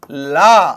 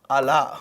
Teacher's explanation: లా అనేదేమో దంతమూల్య పార్శ్వికము. అలా అనేదేమో మూర్ధన్య పార్శ్వికము.